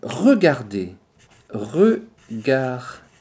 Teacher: Well, there is, I know, already an issue because this R sound is difficult for certain languages. For example, for people having the English language as a native language, this sound is a bit difficult because it's come from the throat.